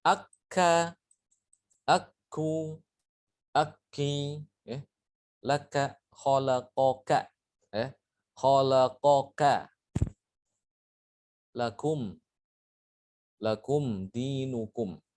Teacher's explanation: Beda dengan huruf kaf. Huruf kaf itu disertai dengan aliran nafas. Ak, ya. Ada nafas mengalir.